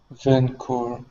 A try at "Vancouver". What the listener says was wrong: your first v was nice okay um pronounce that second v just a little bit stronger